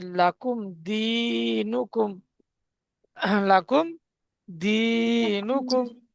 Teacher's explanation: মিম সাকিনকে বিনা গুন্না জাহির করে পড়তে হবে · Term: ইজহারেশাফাবি